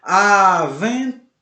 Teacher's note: avental oxítona embora não seja acentuada mas a sua sílaba tônica forte é a última